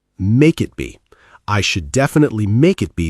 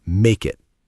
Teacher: the consonant K links right into the vowel I.